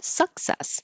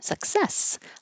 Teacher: a lot of people put stress on the first syllable, success, but it's 1, 2, success, like balloon